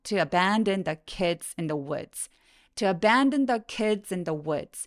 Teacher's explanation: abandon 요거는 app 할 때 애 소리라서 엄청 길게 소리납니다